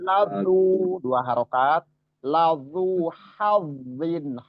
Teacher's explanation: kalau zal itu sifatnya istifal atau tipis. Nah, bacanya tipis kalau zal.